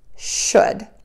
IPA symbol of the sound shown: ʃʊd